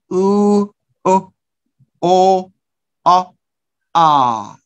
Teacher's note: So when we talk about the shape of the lips or position of the lips, we could say that four of them are rounded. One of them is open, the final A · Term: back vowels